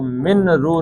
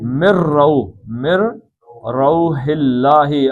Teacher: یہ نون کے بعد رے آ گیا ہے تو من رو نہیں پڑھنا بلکہ مر روح اللہ